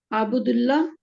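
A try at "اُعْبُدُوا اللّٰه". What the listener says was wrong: उबुदुल्ला जहन में रखें, ये वाली गलती नहीं करनी। उबुदुल्ला, फेल अम्र में हमेशा अलिफ पे या पेश आएगा या जेर आएगी, जबर नहीं आएगा, ये जहन में रखना है।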